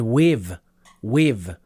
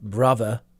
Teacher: my accent has started to change to incorporate some modern pronunciation features of English that's including using the V sound with words like with